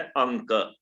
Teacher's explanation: क का उच्चारण स्थान कंठ है, तो इसका अपना उच्चारण स्थान नासिका है और नासिका के साथ कंठ भी होगा।